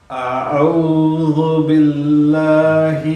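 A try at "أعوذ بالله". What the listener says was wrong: என்கிற அந்த என்கிற ஒரு சவுண்ட் ஒன்று இருக்குது. அந்த சவுண்டு வரணும். அஊது பில்லாஹி. அஊதுன்னு போயிடக்கூடாது, தாலுக்கு போயிடக்கூடாது. ஜால் அதில் கட்டாயம் கவனிக்கப்படணும்.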